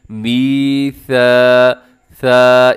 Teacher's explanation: پہلا کون سا ہے؟ میثا، ثا، اس میں سیٹی نہ ہو